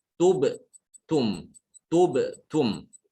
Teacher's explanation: Kataballahu lakum tubtum. Jadi mengucapkan dhamma itu dimoncongkan tub.